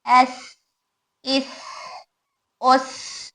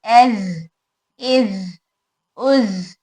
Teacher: अब यहाँ पर सिफत सीन सौद में सिफत पूरे सिफात सेम है, ज और सीन को बारीक करेंगे, सौ को मोटा करेंगे। इसमें सीन और सौद में सिफत हमस है जिसकी वजह से हवा भी बाहर आ रही